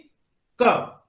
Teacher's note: उसी तरह का वेलर साउंड जो कि आपके हलक से निकलता है, जैसे कि क एकदम हलक से निकल रहा है, क मतलब कि बिल्कुल नीचे से नहीं बल्कि ऊपर से व।